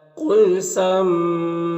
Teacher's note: میم میں یہاں پر اظہار شفوی ہوگا، او میں واو مدہ ہے، ایک الف کے برابر کھینچیں گے، ہاں الٹا پیش ہے، یہ واو مدہ کی طرح ہوتا ہے۔